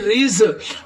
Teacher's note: یہ زا، را زا والا زا، اس کو تھوڑی سی سیٹی کی آواز دیتے ہیں